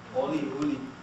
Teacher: the O and the U are very often pronounced in the same manner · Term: intermediate vowels